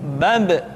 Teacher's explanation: Ketika mati, maka terdengar suara pantulan.